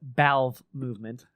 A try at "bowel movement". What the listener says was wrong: Yeah, but with a B.